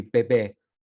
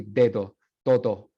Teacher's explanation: en el dialecto andino, por influencia de lenguas indígenas en muchos casos, se pronuncian de forma oclusiva